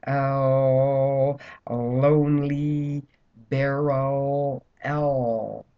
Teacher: wide whereas on the r the tongue curls and goes forward on the L it's lateral and the tongue goes out between the sides of the teeth · the L is lateral the tongue goes wide